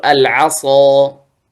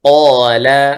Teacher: هذا أشد تفخيما من قال بسبب ماذا؟ الإطباق في الصاد